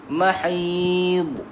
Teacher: huruf dha tak ada lantunan. Cukup sekadar kita dengar di telinga kita ataupun di bibir kita.